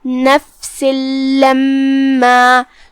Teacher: کلمت نفسن یہاں آخری میں سین کے نیچے تنوین زیر ہے، اور اس کے بعد حرف اللام آتا ہے کلمت لما میں، جو کہ تنوین کی اصلیت اور اس کی ادائیگی نون ساکن ہوتی ہے، گویا کہ ہاں نون ہے، اور حرف اللام حروف الادغام میں سے ہے، لہذا ہم یہ تنوین کو لام میں داخل کر کے بغیر غنہ کے لیکن تشدید کے ساتھ یہ حکم کو ادا کریں گے، کیونکہ لام حروف الادغام بغیر غنہ میں سے ہے.